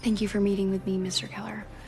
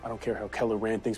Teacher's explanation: syllable indicates where the accent or stress is in this case the accent is in the first syllable corresponding to Kell